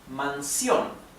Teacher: Mansión. The accent is in sion, okay? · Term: aguda